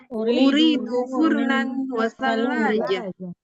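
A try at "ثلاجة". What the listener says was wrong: Thallajah lam tasdid. Thallajah. Lam tasdid. Thallajah. Thallajah. Iya, lamnya pakai tasdid. Tambahin tasdid aja nggak apa-apa.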